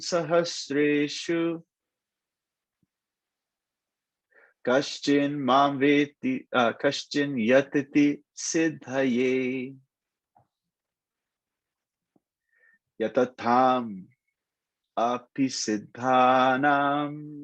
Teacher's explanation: if you overemphasize those long A's, it also helps. It helps with the rhythm too.